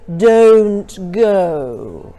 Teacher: make the rounded sound of the O much more exaggerated